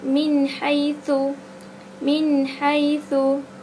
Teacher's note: hukum bacaannya jelas tanpa dengung, tak ada dengung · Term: izhar halqi